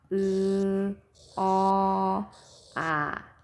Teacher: 혀가 가장 높은 곳에 있었다 낮은 곳으로 점점 이동하는 것이 느껴지죠